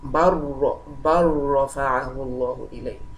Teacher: So bal is a particle, it is an Arabic particle, and the lam is also occurring at the end of the particle, and the next letter is ra. Then we have to merge it together, and it becomes idgham.